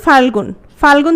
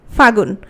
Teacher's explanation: তাহলে ফাল্গুন থেকে যখন ফাগুন হচ্ছে, কোন জিনিসটা লোপ পাচ্ছে? লটা লোপ পাচ্ছে। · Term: অন্তর্হতি